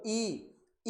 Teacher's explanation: ई बोलोगे तो जीभ का पिछला भाग तालु पे लगता है।